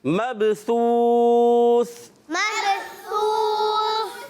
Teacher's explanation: बा उर्फ़े कलकला में से है, बा में कलकला करेंगे, आवाज़ लौट कर वापस आएगी